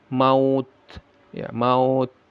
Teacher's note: Ada sifat hames ya, ada udara yang keluar ya.